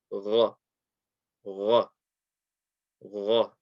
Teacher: the letter Ghain is going to be again from the top of the throat. So very similar to the kha.